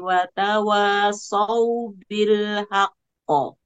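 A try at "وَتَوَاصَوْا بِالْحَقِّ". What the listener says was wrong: Oke, kurang ditahan sedikit lagi. Saubil haqqo. Haq.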